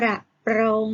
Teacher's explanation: คำควบกล้ำรเรือต้องมีการกระดกลิ้นด้วย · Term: คำควบกล้ำรอเรือ